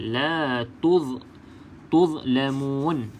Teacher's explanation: pastikan tempat keluar huruf dha ini adalah hujung lidah kena pada bahagian gigi bahagian atas depan. Okey, hujung lidah kena pada gigi atas bahagian hadapan.